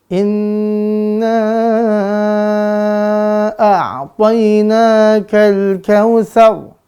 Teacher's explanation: Mim nun bertasydid harus dengung. Durasi dengungnya 2 sampai 3 harokat pemirsa.